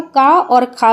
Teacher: का और खा ध्वनियाँ होती हैं कंठी ध्वनियाँ। का वर्ग के जो भी वर्ण होते हैं सब कंठ से उच्चारण उनका होता है, क्लियर।